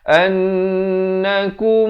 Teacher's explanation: An ini mestilah wajib dengung 2 harakat.